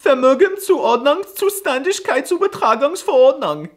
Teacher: they pronounce the V's with an F sound, like in the word Vermögenzuordnungszuständigkeitsübertragungsverordnung.